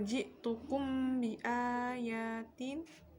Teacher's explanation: sukun bertemu dengan huruf baik Hai cara membacanya dengan suara yang samar antara mim dan ba pada bibir kemudian ditahan kira-kira dua ketukan bersamaan mengeluarkan suara ikhfa dari pangkal hidung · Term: Ikhfa Syafawi, ikhfa syafawi